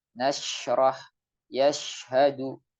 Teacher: Karena huruf shin ini tidak ada kaitannya dengan bibir. Tempat organ pengucapan adalah di tengah lidah, kemudian ditambah dengan udara yang menyebar di seluruh mulut, maka akan terucap biidznillah suara shin yang jelas.